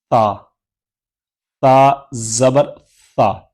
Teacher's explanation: تا زبان کا سرا اوپر کے دانتوں کے اندرونی کنارے سے لگے گا